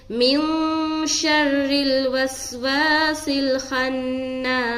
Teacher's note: نون کے اوپر شد آ گیا، نون مشدد کا غنہ کریں گے